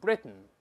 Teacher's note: 咱们先说▁Britain▁是鼻腔爆破的